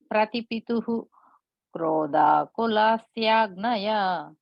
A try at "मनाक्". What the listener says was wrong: One small correction, that first line last letter, right? Manak is a ka sound. The ga that is there in the next line, you break it, becomes a ik and a. So manak.